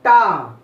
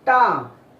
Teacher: जीभ को मोड़ के बोलेंगे टा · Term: मूर्धन्य